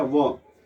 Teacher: व वर्ण दंत और ओष्ठ दोनों से बोला जाता है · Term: दंतोष्ठम